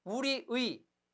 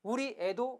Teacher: 조사의는 역시 의와 그리고 애로 발음함도 허용합니다. 그래서 우리의가 원칙이겠고 우리애도 가능합니다.